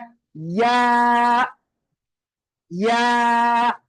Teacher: நாக்குடைய இறுதி அது அக்ஸல் லிசான். இந்த யா எங்க இருந்து வெளியாகுது என்றால் வசத்துல் லிசான், நாவுடைய நடுப்பகுதி, ஹனக்கில் அலா மேல், இந்த இங்க முரசுல படும் போது அந்த யா என்ற எழுத்து வெளியாகுது